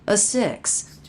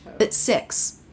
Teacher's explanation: No T at all. Hear the stop T.